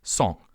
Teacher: You pronounce the vowel as you would any vowel, but you pass air through your nose, which changes the sound. When you pass air through your nose while pronouncing a vowel, that is referred to as nasalization.